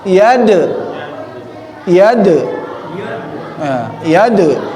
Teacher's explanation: Dal masuk juga syiddah ya, al-jahr juga ada qalqalah di situ, harus mantul. Iade ya, iade harus muncul de-nya.